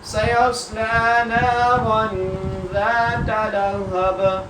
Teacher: سیصلی, پہلے سین سٹی کے ساتھ, پھر جا کو جب صاد سے ملانا ہے صاد کو موٹا کر کے پڑھنا ہے اور سٹی کے ساتھ پڑھنا ہے